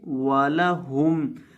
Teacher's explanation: ہا کو حلق کے آخری حصے سے ادا کریں گے